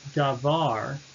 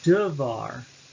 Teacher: And in the first syllable, da, you've had the vowel reduction from da to duh, devar.